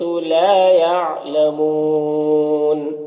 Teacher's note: یہاں پر وقف کی صورت میں نون کا زبر سکون سے بدل جائے گا تو مد عارض وقفی ہوگا۔ اس میں طول، توسط، قصر تینوں جائز ہوتا ہے۔